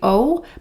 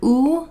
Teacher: I think oftentimes in Portuguese when there's an O at the end of the word, like as an English speaker, I would say O, but I think it's more of an oo sound